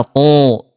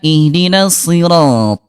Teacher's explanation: huruf to, dia jahar, tidak ada udara. To, enggak ada udara, diangkat pangkal lidahnya.